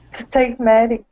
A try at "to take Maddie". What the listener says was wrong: good yeah and so we bounce we bounce off of two and right into take